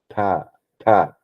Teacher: Dental where the tongue is going to touch your teeth